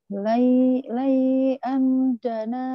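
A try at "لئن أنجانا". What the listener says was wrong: Lain. lain. Anja iya, lain ada innya. Lain anjana min. Ja-nya panjang, nanya panjang.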